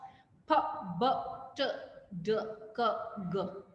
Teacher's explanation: when you say p so obviously the air is blocked